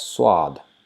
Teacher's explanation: In Urdu, it is pronounced as swad, swa with W, with rounded W sound